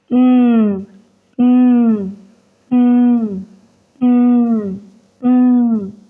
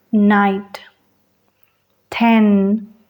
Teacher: es una oclusiva nasal lo que quiere decir que la vibración de las cuerdas vocales viajará hasta la nariz sentirás una pequeña vibración en el cuello y la nariz Mm